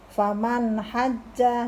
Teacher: nun sukun bertemu huruf ha dibaca jelas. Hukum bacaannya adalah idhar.